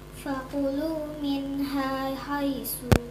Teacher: Karena nun sukun bertemu dengan huruf ha. Nun sukun bertemu dengan huruf H, maka membacanya harus dibaca dengan Jelas. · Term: izhar